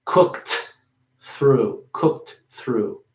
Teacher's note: You have to say the T, but you don't want to really pronounce it heavily or too much.